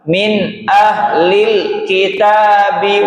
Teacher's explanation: alif lam itu diucapkan lam sukunnya saja tanpa pantulan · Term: alif lam qamariah